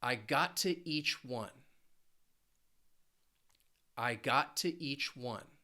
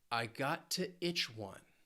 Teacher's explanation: I chose these because they end with that CH, that ch sound. Each, that smile, and itch, relax.